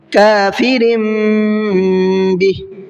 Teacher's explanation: رن نہیں پڑھیں گے بلکہ رم، کافرم، اور ساتھ میں غنہ بھی کریں گے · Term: اقلاب کا قاعدہ